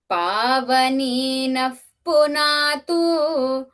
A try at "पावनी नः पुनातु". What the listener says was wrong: Okay, do not try not to pull punatu. Okay, the last ukara, try to keep it as hrasva.